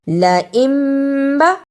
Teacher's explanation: لَإِمبا نون ساکن پر چھوٹی سی میم ہے، اسے اقلاب کہتے ہیں، اس کے فوراً بعد با آتا ہے۔ ادا کرنے کا طریقہ نون ساکن کو میم سے بدل کر پڑھنا ہے